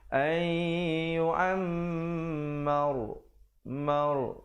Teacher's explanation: didengungkan yu'am, mim sabdu 2 harakat, mar, dan ra di situ menjadi tebal